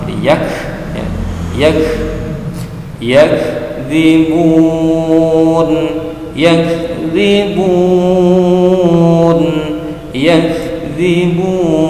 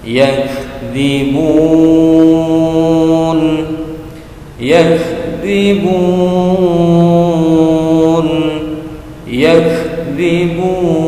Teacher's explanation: huruf kafnya mendesis sedikit mengeluarkan udara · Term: huruf hamus